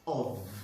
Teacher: I hope you don't pronounce the word off like you want to switch off something, you know. It's with the V sound, of. Weak form, of.